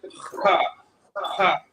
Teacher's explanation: You got to find that ugly kind of guttural happy medium place where you're kind of mixing some of those elements together, and you get the expression of ha, ha. It's going to come from the back of the throat. Ha, ha. If anybody's ever tried to hop a loop and you had to pull up some phlegm from the back, you're pulling it from the back of the throat and ejecting it forward. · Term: hard H